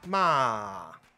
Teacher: 第四声骂就是从最高音滑到最低音